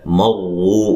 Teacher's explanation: را کو موٹا ادا کرنا ہے، میم کو را سے سختی سے ملانا ہے